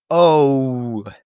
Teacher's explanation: in English we say oh we have this like woo sound at the end. We had this like scoop at the end where we say woo, right?